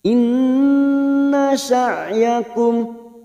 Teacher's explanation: Nun yang bertasdid gunna mustaddada kita tekan selama 3 harokat.